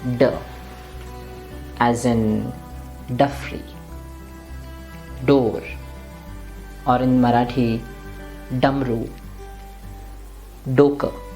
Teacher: the tongue is touching the roof of the mouth slightly behind. It's slightly at the back. And that's why the sound is a little heavy, D.